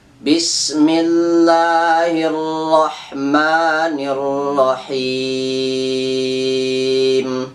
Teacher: Membunyikan huruf ro, jangan terlalu banyak getaran. · Seperti Bismillahirrahmanirrahim itu nggak pas, nggak tepat, dan itu salah. Maka harus di sini membunyikan huruf ro-nya dengan tafkhim